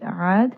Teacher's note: Ba'di, Ain is going to have tawassut, roll that around in the throat. Aad, Ain is going to be a 2 count mad